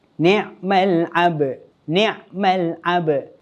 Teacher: Cara yang betul bila kita nak wakafkan bacaan pada kalimah ni, yang pertama sekali, kita kena sukunkan huruf dal di akhir kalimah ketika kita nak berhentikan bacaan. Yang kedua, lantunkan huruf ba di pertengahan kalimah dengan lantunan qalqalah sughra.